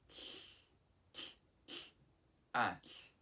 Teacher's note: The stem is A, as in ah, and the suffix is TL, as in k, pronounced by touching the tip of your tongue to the back of your upper teeth like you're making a T sound, t, while blowing air on the sides of your tongue